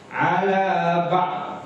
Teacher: Karena dhad bukan qalqalah sehingga tidak dipantulkan ketika mati.